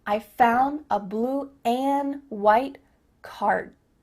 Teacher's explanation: Here the word and is being reduced. Just cut off that final D sound.